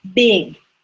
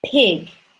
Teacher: the B is voiced that means I'm using my voice to make it and P is unvoiced